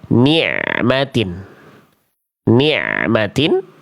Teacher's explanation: cukup dialirkan tanpa dipantulkan suaranya ya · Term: ain sukun